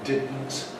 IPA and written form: ˈdɪdn̩t (didn’t)